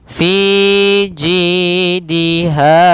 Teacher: pada lafal fi ada ya yang didahului dengan kasrah, maka hukum tajwidnya mad tabi'i, panjangnya 2 harakat. Jidiha sama panjang 2 harakat, yaitu ada ya didahului dengan kasrah.